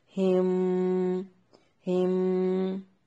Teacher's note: यहाँ पर मीम साकिन का इख्फा है, गुन्ना करके पढ़ेंगे।